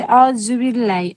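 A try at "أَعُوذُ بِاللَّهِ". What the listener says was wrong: نہیں، ذال اعوذ بالکل باریک. सही आउज़ू है, दाल। ऐसे बात दफ़ा सुनती तो बोला दालिन लगता होगा सुनने में, तो ये इतना मोटा पढ़ दिया जाता है कि लगता है दाल पढ़ा जा रहा है, लेकिन दाल नहीं है, ये ज़ौद है।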